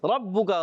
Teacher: را پر زبر آنے کی وجہ سے را کو پر پڑھیں گے. ربو کا، با مشدد ہے، ذرا رک کر ادا کریں گے.